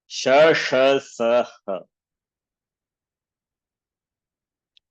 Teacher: So Uchcharnasthanam, you can see palate. Shakara is palatal and Sha is cerebral. Sakara dental. Ha is guttural.